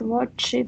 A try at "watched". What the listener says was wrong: Watched. You pronounce ed as id only if the verb finishes with t or d. Like I want, wanted, not. But if it's ch, you say watched without id.